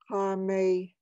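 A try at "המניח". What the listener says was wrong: It's Ha'me'ni'ach. so instead of a ha, it's ach, I believe.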